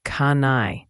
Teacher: The N connects directly to the I